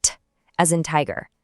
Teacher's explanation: T is a really crisp unvoiced tap